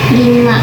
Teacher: udara masih bisa keluar melalui salah satu atau kedua Sisinya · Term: bunyi samping